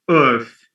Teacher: There's no cluster here. No cluster. Because the R is silent. Earth. It's E-A-R-T-H.